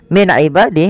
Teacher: ada nun sukun bertemu dengan Ain yaitu dibaca dengan jelas Suara nunnya karena dia ada bacaan izhar halqi izhar artinya jelas halqi berarti